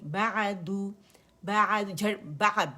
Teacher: بعدو، عین میں ہمارے پاس توسط ہے اور با کے لیے وہی آواز ایک کاؤنٹ کے لیے اوپر جائے گی اور دمہ کے لیے دال پہ دمہ ہے، گول ہو جائے گی